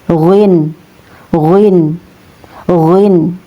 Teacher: Huruf ghin ini ya, huruf ghin ini ya keluar dari bagian tenggorokan yang paling dekat dengan rongga mulut, tepatnya persentuhan antara bagian belakang lidah dengan ujung uvula ya. Ujung uvula yaitu daging yang tersambung dengan langit-langit.